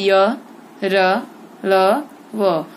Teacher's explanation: हमारी जीभ है, वो मुख के किसी भी भाग को पूरा पूरा स्पर्श नहीं करती। ठीक है, और ये स्वरों और व्यंजनों के बीच में स्थित है। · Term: अंतस्थ व्यंजन